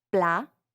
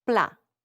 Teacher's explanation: Notice how the final T is not pronounced. That's because in French, generally, if a word ends with a consonant, it's silent.